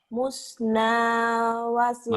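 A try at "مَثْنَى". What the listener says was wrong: Iya itu salah. Itu bukan domah tapi patah. Masna. Itu musna kan? Itu domahnya garis ganti sama masna.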